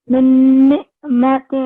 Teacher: اس پہ غنہ کرنا ہوتا ہے نون پہ